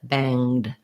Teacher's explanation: banged um so no no sound for that e and uh no g sound just an ng sound